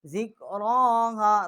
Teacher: ذکراها, را کو ایک الف جتنا اس کی آواز بلند کی ہے, اور ہا جو ہے یہ بھی اقصائے حلق سے اس کا مخرج ہے, اس کو بھی ہم نے ایک الف جتنا یہاں آواز کھینچی ہے.